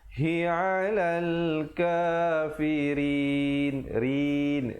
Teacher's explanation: ra di situ menjadi nipis dan diwakafkan dengan 2, 4 ataupun 6 harakat, hukumnya mad arid li sukun.